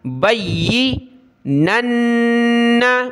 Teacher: اس با کو یا کے ساتھ ملا، یا کو سخت کیا